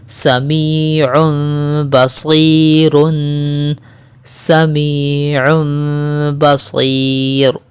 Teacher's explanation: یہاں پر تنوین کے بعد با آ رہا ہے تو یہاں پر ہم کریں گے اقلاب مع الغنہ